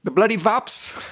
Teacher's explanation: the W will be pronounced with a V sound, VUSPs. The bloody wasp comes out as bloody vaps.